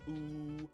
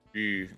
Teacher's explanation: The normal U is pronounced like ooh, while the U with the dots is more of a rounded ooh.